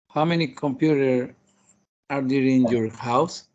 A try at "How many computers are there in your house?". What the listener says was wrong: Yeah, well, that's correct, but you are not pronounced the letter S at the end of computer. It's computers, plural. How many computers are there in your house?